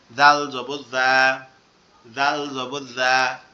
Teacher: জিহ্বার আগা সামনের উপরে দুই দাঁতের আগার সঙ্গে লাগবে, লেগে নরম আওয়াজ হবে এটা